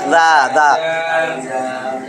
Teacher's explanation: জিহ্বার আগা উপরের দাঁতের সামনের 2 দাঁতের আগার সঙ্গে লাগে